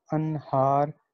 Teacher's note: نون ساکن ہے اور ہا جو ہے وہ آپ کے حروف حلقی میں سے، تو یہ اظہار ہوگا